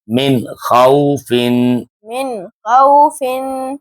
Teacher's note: نون ساکن کے بعد حروف حلقی میں سے خا آ گیا ہے، اس لیے نون ساکن کی آواز کو ظاہر کر کے پڑھا جا رہا ہے.